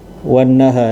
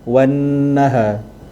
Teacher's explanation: Nun bersabdu tu wajibul gunnah, terus kepada ha tu.